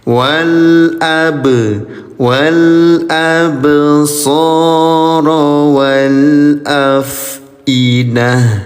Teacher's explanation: Bak sukun warna ungu nih Bunda, ada kode di atasnya. Ya, namanya qalqalah. Cara bacanya PTL. PTL itu pantulkan ya bacaan huruf baknya.